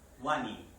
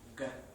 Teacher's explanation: Con la G hay obstrucción, es decir, toca en la zona velar